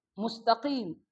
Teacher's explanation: Keluar dari pangkal lidah dengan yang bawah langit-langit, yang atas. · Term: qaf